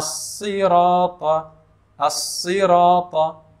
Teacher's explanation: Huruf sad ini makhrajnya sama dengan huruf sin dan juga huruf zai, yaitu terletak di ujung lidah dengan bahagian bawah gigi seri bawah. Ada dua gigi tengah bawah itu, jadi ujung lidah menempel ke bahagian bawah gigi seri bawah.